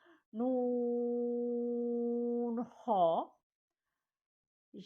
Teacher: گلے کے شروع سے خو آواز باہر کی طرف لے کے آنی ہے